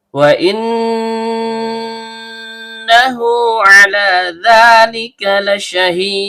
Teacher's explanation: Nun ujung lidah bertemu dengan langit-langit bagian tengah. Karena nunnya bertasydid, maka hukum bacaannya gunah asli. Dibaca dengung dan setiap dengung keluar dari hidung.